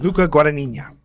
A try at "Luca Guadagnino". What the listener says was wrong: Nino. There's an O at the end there. It's Nino.